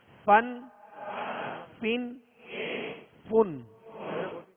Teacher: فا کا مخرج کیا ہے؟ اوپر کے سامنے والے دونوں دانتوں کے جو کنارہ ہے وہ نچلے ہونٹ کے تر حصے سے لگے تو فا ادا ہوتا ہے · اوپر کے سامنے والے دونوں دانتوں کے جو کنارہ ہے وہ نچلے ہونٹ کے تر حصے سے لگے تو فا ادا ہوتا ہے، فا۔ اس کو فا واو کی طرح ادا نہیں کریں گے اور نہ ہی دونوں ہونٹوں کو ملا کے پھا پڑھیں گے، بلکہ اوپر کے سامنے والے دو دانتوں کے کنارے اور نچلے ہونٹ کا تر حصہ یہ مخرج ہے یعنی نکلنے کی جگہ ہے فا کی.